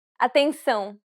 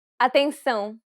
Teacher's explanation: since it's a nasal diphthong, you should pronounce it through the nose.